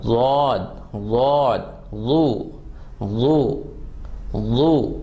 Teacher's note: زبان کی سائڈ کو استعمال کرنا ہے, زبان کی نوک کو استعمال نہیں کرنا